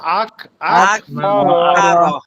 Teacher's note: আকো আকো বলে ধাক্কা দেওয়া যাবে না, মানে কলকলা করা যাবে না কিন্তু।